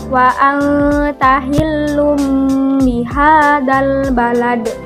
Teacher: Nah, di ayat tersebut terdapat hukum bacaan iklab, yaitu tanwin bertemu dengan huruf ba. Jadi membacanya itu kita harus dengung.